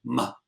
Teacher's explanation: When we say we're really just doing the B sound, M, but we're opening up a little trapdoor at the back of our nose and making the sound come out the nose, so it softens the B into a M. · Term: nasals